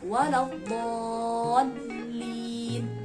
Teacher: Tasydid yang ada pada lam itu kita nggak boleh meninggalkan. Dan pada kata waladdallin itu terdapat mad lazim musaqqal kalimi, yaitu panjangnya 6 harokat.